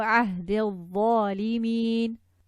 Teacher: Dropping the mud letter, connecting the dal to the dha. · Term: Hamzah al-Wasl